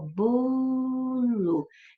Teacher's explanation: Já viu que a sílaba tônica é bo e que o radical é bom, até no L, porque daqui eu poderia falar bolinho, bolão, né?